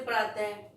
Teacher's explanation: प्रातः बोला तो हमने उसमें भी ह की साउंड आ रही है, ठीक है, लेकिन वो कौन सा हो जाएगा, वो विसर्ग हो जाएगा।